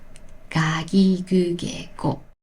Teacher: In my experience, that nasal sound is mostly used by people in their 70s or older. To me, the non-nasal ga gi gu ge go sounds more natural.